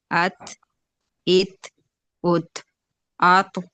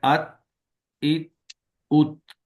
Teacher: بالکل تھے کی آواز نہیں آنی چاہیے، بس اس میں آواز بند ہو جائے۔